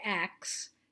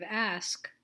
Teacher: what happens when people say acts instead of ask is that those two sounds the S and the K change places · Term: metathesis